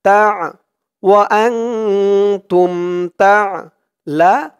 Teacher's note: তা وأنتم تعلمون এখানে অক্ফ করার কারণে পেশের পরে ওয়াও সাকিন এক আলিফ টানটা তিন আলিফ টান হয়ে গেছে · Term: মধ্যে আরজি